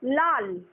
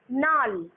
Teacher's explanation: দুটো একই ধ্বনি ছিল, দুটোই ল ছিল, কিন্তু প্রথম ধ্বনিটা পরিবর্তিত হয়ে গেল, ওটা দন্তের ন হয়ে গেল। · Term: বিষমীভবন